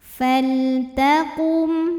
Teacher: mim sukun menghadapi huruf selain mim dan ba di sini hurufnya adalah huruf th maka mim sukun kita bunyikan dengan jelas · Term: izhar syafawi